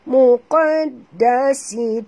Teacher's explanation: Huruf qaf ni dia bacaan dia kena baca tebal qaf ya. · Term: huruf qaf tebal